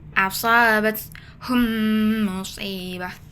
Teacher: Cara bacanya adalah digabungkan, dileburkan dua huruf mim dan didengungkan